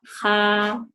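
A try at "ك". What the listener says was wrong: K-nya kurang terang lagi. K. Kak, kayak misalnya ngomong kakak, coba. Nah, kakak ya, nggak ada haknya. Ka, ho, ko.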